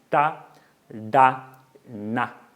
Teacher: sons produzidos com sua língua coladinho no palato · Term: cerebrais